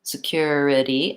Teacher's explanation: I have unstressed first syllable, stressed second syllable, cure. It's just like the word cure, security, and then 2 unstressed syllables at the end.